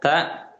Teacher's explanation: Ta ini dia masih satu makhraj, berdekatan dengan huruf dal, tapi sifatnya beda. Ta ini punya sifat hamas atau adanya keluar percikan nafas di situ.